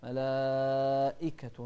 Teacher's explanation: ملائكة نوضح الهمزة مع كسرها